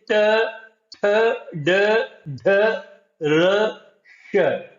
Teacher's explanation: बाद में है मूर्धन्य। मूर्धा और जीभ के स्पर्श से वाले वर्ण जैसे ट, थ, ड, ढ, र, श।